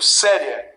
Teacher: o E é mais forte, esse I é mais fraco, ditongo crescente.